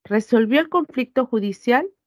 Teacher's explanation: Las interrogativas directas totales, llamadas también absolutas, tienen una inflexión tonal ascendente